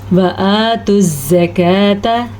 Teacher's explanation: کاف کو باریک پڑھنا ہے